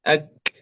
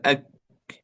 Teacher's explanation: الكاف صفاتها همس وشدة واستفال وانفتاح، يعني حرف مهموس لكنه شديد، يعني الصوت لا يجري فيه. لا نقول أك، لا يمكن أن نمد الصوت بالكاف لأنه شديد، ولكنه مهموس فيه هواء، أك، فيه الهمس.